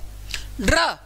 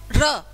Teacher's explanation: अंदर वाइब्रेशन है ना जीभ वाइब्रेट करती है कैसे र ड्र अगर आप र को बोल के देखोगे तो आपकी जीभ में कंपन होगा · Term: लुंठित